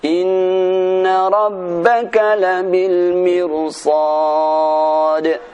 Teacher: Mirsada dan labil mirsad dibaca dengan tebal walaupun sebelumnya ra berupa kasrah. · ada dua tempat huruf ra mati didahului dengan bacaan kasrah wajib dibaca dengan tebal